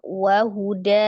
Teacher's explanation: dengan Alif sebagai pemanjang tapi ketika dia diwasal dia tidak panjang ketika dia diwakafkan nah baru berubah ya menjadi Mad Iwat yang tadinya fathah tanwin menjadi fathah dua harakat